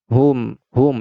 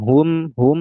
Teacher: dengan merapatkan kedua bibir bibir atas dan bibir bawah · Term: mim yang sukun